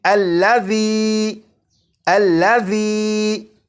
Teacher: اسی طرح اس لفظ میں ذال ہے، اور آپ نے اگر ذال کی بھی بھرپور پریکٹس کر لی تو آپ کو معلوم ہوگا کہ ذال کو سی ٹی کی آواز کے بغیر پڑھنا ہے